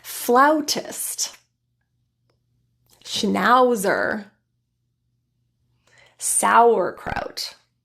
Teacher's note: the first vowel sound is similar to that a sound with the jaw open tongue low and lips retracted to an open Smile ah the sound then transitions as we round our lips very